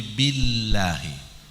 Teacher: lidah tetap kena atas langit-langit atas Tetapi dia tidak menyuntuh gigi ujung lidah kena langit-langit atas tapi ke depan bukan ke tengah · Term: lam